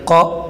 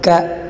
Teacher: قاف کو موٹا پڑھیں گے اور کاف کو ذرا باریک